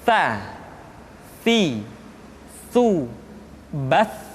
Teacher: ujung lidah disentuhkan dengan dinding dua gigi seri bagian atas